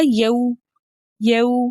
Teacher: اب واو ساکن، اس سے پہلے کسی بھی حرف کے اوپر زبر ہو ایسی واو لین کہلاتی ہے۔ واو لین کو ہم 1.5 حرکت کی دیر لگا کر نرمی اور سہولت کے ساتھ پڑھتے ہیں